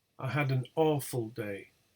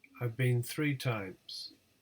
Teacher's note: the words awful and three receive the tonic stress well in the word awful it's the first the first syllable · the words awful and 3 receive the tonic stress